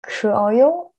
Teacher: sound is like a schwa in English. So unstressed one, and really the vowel doesn't have really clear sound.